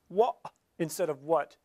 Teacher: when they say what they're actually closing their glottis